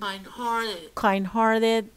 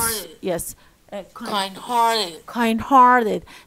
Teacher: وبيقول لي القاعدة بتقول لي إن إحنا we put stress on the second word.